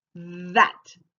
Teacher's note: my tongue is between my teeth but it kind of vibrates